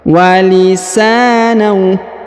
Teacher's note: huruf sa dibaca panjang 2 harokat karena di depannya terdapat alif